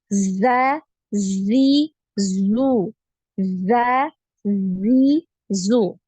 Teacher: Jadi tidak ada aliran nafasnya ketika pengucapan huruf Zai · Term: tertahan nafasnya